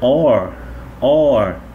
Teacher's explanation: Um O e um R é mais um O aberto